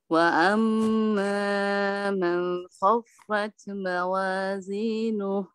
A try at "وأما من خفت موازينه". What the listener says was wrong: মানের মধ্যে কি গুণনা করলেন গুণনা হবে না তো